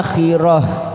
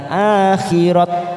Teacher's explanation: Akhirah karena kita berhenti di sini maka ujungnya ada tak marbutoh kita baca dengan huruf ha. Akhirah, bukan akhirat tetapi akhirah.